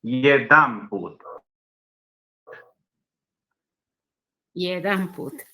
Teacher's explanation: Yedan tiene acento en la E. Se trasladó el acento a la A. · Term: metatonía progresiva por adjunción